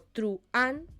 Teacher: Estabas separando esos vocales que debían ir unidas en un solo sonido, en un solo golpe de voz. Y en ese caso sí que se acentuaría porque sería una palabra de 2 sílabas aguda terminada en N. · si tú pronunciabas guión, como hacíamos la mayoría, o truán, por ejemplo, tú estabas haciendo un hiato sin ser consciente de ello. Estabas separando esos vocales que debían ir unidas en un solo sonido, en un solo golpe de voz.